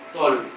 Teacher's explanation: जो थोड़ा soft sound है वो मुझे लगा मुंडा। तोल, तो मैं दांत और जो तालु है वहां प्रोनाउंस कर रहा हूँ